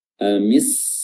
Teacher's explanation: Yang asalnya dia hanya al sama atau amil sama, tapi karena lam di sini bertemu dengan huruf sin, jadi untuk memudahkan langsung dimasukkan atau ditasydidkan ke huruf sin. Jadi lamnya sudah tidak terucap lagi.